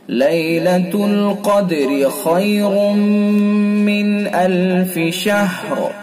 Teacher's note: یہاں را کے نیچے ہم چونکہ حرکت پڑھ رہے ہیں، زیر پڑھ رہے ہیں، تو اس لیے را باریک ہوگی، را متحرک ہو جائے گی، را متحرک والا قاعدہ بن جائے گا۔